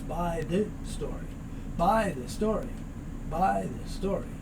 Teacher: When we have it as this story, though, there's only one S sound, and that S sound moves over